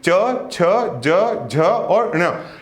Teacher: च वर्ग के बारे में जब बात करेंगे तो च वर्ग का जो उच्चारण होगा, अब इसको पढ़ के देखिए, च, छ, ज, झ और ण, इनका जो उच्चारण हो रहा है ये आपके तालु से हो रहा है